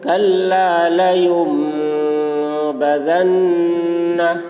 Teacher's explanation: نون ساکن کے بعد با آ رہا ہے، اس لیے نون کو میم سے بدل کر غنہ اور اخفا کے ساتھ پڑھیں گے. اس کو اقلاب کہتے ہیں.